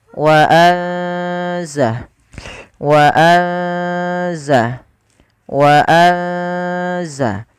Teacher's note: ikhfa itu membaca di antara keduanya, yaitu dia menyamarkan saja, menyamarkan suaranya kepada huruf zai